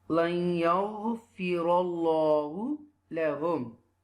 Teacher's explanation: Okay, this is Allah name, okay, and there is a zaba before Allah name, so you will read with tafkhim